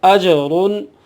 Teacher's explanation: حروف قلقلہ میں سے ہے، یہاں قلقلہ ہوگا، جیم ساکن ہے